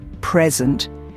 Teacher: When the stress is on the first syllable, present, it's a noun that means a gift. But when the stress is on the second syllable, present, it's a verb that means to give or show something.